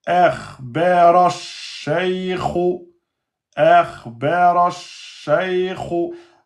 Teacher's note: Lem, il est solaire, on ne le prononce pas. Donc de ra, on va directement au shin.